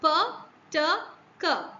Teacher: in plosives when you are trying to articulate the consonant sounds it holds the air for a fraction of seconds and then there is an expulsion of air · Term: voiceless plosives